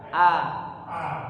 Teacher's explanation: a-nya dihilangin eng-nya, jangan nga tapi a